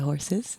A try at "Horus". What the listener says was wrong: No. Oh, it's not horse. It's Horace. Horace. That's my pronunciation. Yeah, Horace.